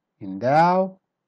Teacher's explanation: start weak then become strong